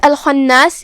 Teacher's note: خاء کی ادائیگی حلق کے اوپر والے حصے سے ہے، خاء حروف التفخیم میں سے بھی ہے، ہم اسے بھاری آواز میں پڑھیں گے۔